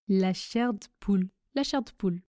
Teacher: Je ne prononce pas le E du mot de.